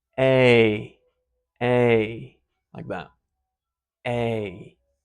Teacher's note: if you listen carefully, you'll hear A is actually two vowels. It's a diphthong. And it starts with the E, which looks like that.